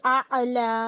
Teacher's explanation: اعلا عین ہے اس لیے اعلا کہیں گے. عین حلق سے نکلتا ہے نا، اسے آلہ نہیں کہیں گے، الا نہیں کہیں گے. عین ہے اس لیے حلق سے اعلا.